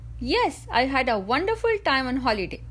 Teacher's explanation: I stressed on the words wonderful time because I wanted to show that wonderful time is important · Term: Sentence stress